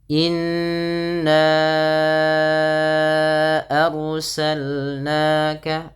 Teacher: ro-nya ditebalkan karena ada huruf ro yang sukun didahului dengan fathah, maka ro-nya menjadi ro yang tafkhim, yaitu ro yang dibaca dengan tebal. · Di sini innya ditahan dahulu 2 harakat, jangan hanya langsung inna arsalna, tapi ditahan bunyi suara n-nya, dipanjangkan 2 harakat karena ia terdapat bacaan gunnah